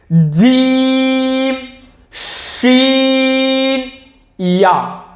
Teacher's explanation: जबान के दरमियान और तालू के दरमियान से तीन हर्फ अदा होते हैं